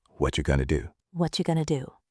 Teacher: What are you becomes whatcha, and going to becomes gonna. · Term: connected speech